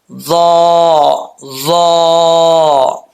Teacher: اس کا مخرج زبان کی نوک اوپر والے دانتوں کی جو نچلا حصہ ہے اس کا اندرونی حصہ، وہاں پر یہ لگے گی